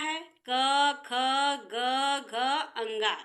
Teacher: इनका उच्चारण स्थान क्या है कंठ है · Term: क वर्ग